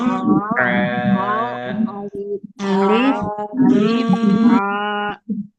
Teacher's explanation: Tapi hakikatnya huruf ain ini dari tengah tenggorokan.